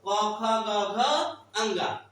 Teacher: कवर्ग और आ का उच्चारण कहां से होता है, तो कंठ से होता है, कहां से, कंठ से होता है। क बोलिएगा तो कंठ को जोड़ देना पड़ता है ना, कंठ से स्पर्श करके आगे बढ़ती है आवाज